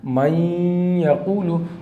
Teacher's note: ایک الف کے برابر غنہ کر کے پڑھنا ہے